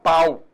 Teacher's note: Ah, então nesse caso, eu tenho vogal A e semivogal U. Houve um declínio aí do som.